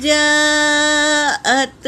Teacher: اور جیم پر مد ہے، مد متصل، اسے 3 سے 4 الف کی مقدار کھینچیں گے۔